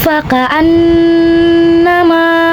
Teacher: Sebab nun bertasydid, maka cara bacanya adalah nun didengungkan. Jadi ditahan kurang lebih dengungannya 2 harokat. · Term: nun musyadadah